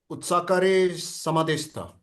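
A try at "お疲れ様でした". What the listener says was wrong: Otsukare sama deshita. It's su. Otsukare sama deshita.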